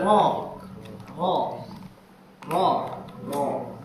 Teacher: dia aslinya adalah suara yang menyebar dari belakang ujung lidah